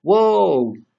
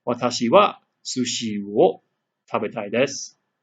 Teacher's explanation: It sounds more like O with a slight inkling of a W sound at the beginning.